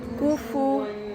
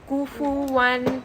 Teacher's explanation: گے 2 count وَلَمْ يَكُنْ لَهُ كُفُوًا أَحَدٌ اب یہاں پر قاف اور فا پہ ہمیں ضمہ نظر آ رہا ہے لپس آپ کے راؤنڈ ہونے چاہیے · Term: لپس راؤنڈ